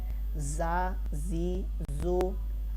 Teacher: تا، تی، تو یہ حروف مصالیہ ہے، یہ موٹا پڑھا جائے گا، یہ دونوں میں فرق ہے۔ زا، زی، زو یہ حروف صفیریہ ہے، اس پر سیٹی کی آواز پیدا ہوگی